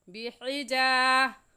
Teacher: अलिफ मद्दा को एक अलिफ के बराबर खींच कर पढ़ते हैं